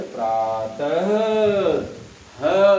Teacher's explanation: अंत में बोध हो रहा है कि प्रातः ह, अर्थात यह विसर्ग जो है ह का बोधक होता है, इसीलिए यह स्वर नहीं है।